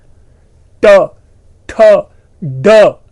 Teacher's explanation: जीव कर्व हो रहा है, ऊपर के पोर्शन को हिट कर रहा है, जीव छूटता है, उस स्थल विशेष को छोड़ता है, हवा झोंके से निकल रही है